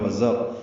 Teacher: وزر واو ہونٹوں کی نہ تمام گلائی سے ادا کریں گے، زا کو تیز صفیر کی آواز سے ادا کریں گے